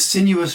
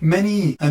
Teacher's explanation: the sesquisyllabic diphthongs of “sinuous” and “many an”, which seem to overfill the lines with an extra half-syllable